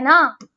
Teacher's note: दंत से भी बोला जाता है और नासिका से भी बोला जाता है